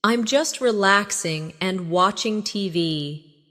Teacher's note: Notice the flow. No long pause between relaxing and and.